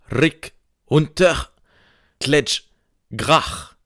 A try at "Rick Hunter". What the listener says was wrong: T'as juste prononcé le deuxième R de Rick Hunter à la française.